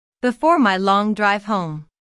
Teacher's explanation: notice the emphasis in intonation on home